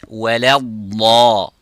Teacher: So say the dad is full mouth and not the lam.